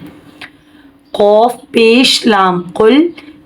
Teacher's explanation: دو نقطے والا قوف آ رہا ہے، قوف کو پر پڑھیں گے، لام ساکن ہے، آواز رکے گی